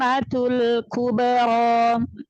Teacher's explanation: Jadi ketika masuk ke mim tasydid datar aja, Ustazah, jangan dinaber, ya. Matul kubra, jangan dinaber, jangan dinaikkan suaranya, ya.